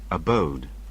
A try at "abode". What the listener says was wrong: Yes, it is abode. A-B-O-D-E. Always checking about the pronunciation.